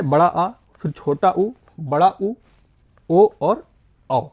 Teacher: पश्च का मतलब दोस्तों होता है पीछे का हिस्सा, जिसके उच्चारण में जीभ का पिछला हिस्सा एक्टिव रहता है, या पिछला हिस्सा जो है ऊपर की ओर उठता है, उसे कहते हैं पश्च स्वर